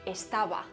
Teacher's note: de pronunciar la B la oclusiva cuando cerramos los labios y la aproximante cuando se juntan mucho pero no se tocan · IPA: ['es.ta.β˕a]